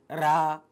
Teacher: जैसे आप बोलेंगे तो आपकी जीभ में थोड़ा सा कंपन होगा चाहे तो आप बोलकर देख लीज आगे हम बात करते हैं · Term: कंपित